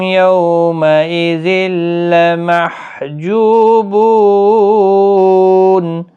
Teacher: تنوین کے بعد یرملون کا لام ادغام ہوگا لیکن گنہ نہیں ہوگا